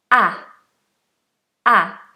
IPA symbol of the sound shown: æ